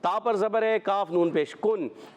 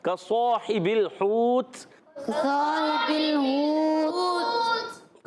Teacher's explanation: یعنی اخفا کریں گے غنہ کریں گے نون ناک میں آواز لے جائیں گے اور نون کو چھپا کر ادا کریں گے